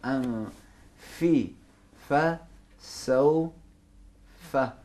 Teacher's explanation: ऊपर वाले दांत नीचे वाले होंठों के नरम हिस्से पे लगेंगे